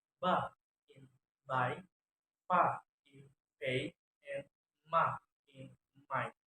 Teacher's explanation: bilabial sounds are made by putting two lips together as sound ba in by, pa in pay, and ma in my.